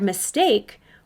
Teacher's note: In the word mistake, we hear the short vowel I sound in the first syllable because it's a closed syllable